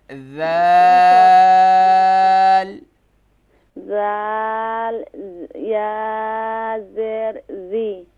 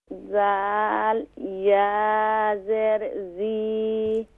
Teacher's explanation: ذی کیونکہ یائے مدہ ہے تو اسے ایک الف کی مقدار کھینچیں گے